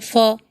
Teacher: ये दोनों होंठ को मिलाकर हवा निकालने पर यह बनता है फ, दो होंठ के बीच से